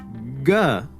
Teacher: Ga now is voiced, but unaspirated. So there's a vibration,